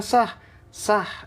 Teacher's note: itulah huruf ha rasanya di mana Di tengah tenggorokan